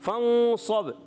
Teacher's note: صاد موٹے حروف میں سے، ایکسٹرا موٹے حروف میں سے، اس کو زیادہ پر رکھنا ہے، با میں آخر میں قلقلہ ادا کریں گے حروف قلقلہ سے۔